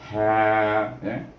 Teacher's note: Ingat ha ini dia bunyi daripada tengah halqum dan berangin dia.